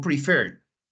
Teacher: prefer tiene dos sílabas pero como nos damos cuenta que que el acento digamos la fuerza de la palabra va en la última sílaba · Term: la sílaba estresada